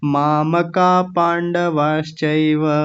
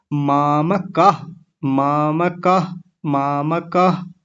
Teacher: मामकाह, मामकाह, मामकाह, ऐसे करके बोलेंगे। हल्के से ह जैसी आवाज आएगी पीछे। और माम का नहीं बोलना, माम, मकार पूरा है, ये जो म है ये पूरा है तो पूरा बोलेंगे, आधा नहीं बोलना। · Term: विसर्ग